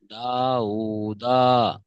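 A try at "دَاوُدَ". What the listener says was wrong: দা উ দা। এই দাটা টান হবে না।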